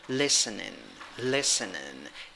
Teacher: The stressed syllable is the first one, and you have a weak I in the first syllable. You have a tiny little schwa in the second syllable, and you also have a weak I at the end of the word.